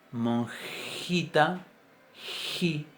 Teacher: Por ejemplo, si decimos una J bien adelante, en una palabra como por ejemplo monjita, ji, esa J es una J bien palatal, bien palatizada